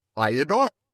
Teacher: So I adore, we slip a little Y sound in there. And it becomes I adore.